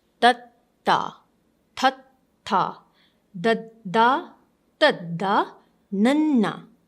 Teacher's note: your tongue is touching the gum of your upper teeth.